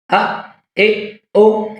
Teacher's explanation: یہ جھٹکا دے کر پڑھا جائے گا، حمزہ ساکنہ ہے